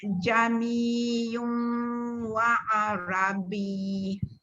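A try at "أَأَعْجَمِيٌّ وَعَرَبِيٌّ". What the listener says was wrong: B. Tekanan dia tak ada. Macam BIY tu. B. Gitu.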